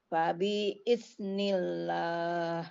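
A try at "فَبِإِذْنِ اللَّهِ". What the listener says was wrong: Ya, fabi Jadi nggak ditekan, langsung fabi iznillahi wali. Bukan fabi, tapi fabi iz. Fabi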